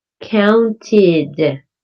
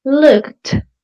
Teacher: The ed sounds like id, counted. Instead, looked. The ed sounds like a t